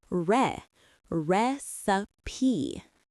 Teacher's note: Three syllables with the stress on the first syllable.